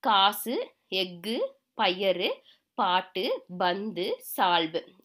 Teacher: ஒரு மாத்திரைக்கு பதிலாக அரை மாத்திரை அளவே ஒலிக்கும் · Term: குற்றியல் உகரம்